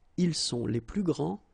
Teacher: So you don't pronounce this final S.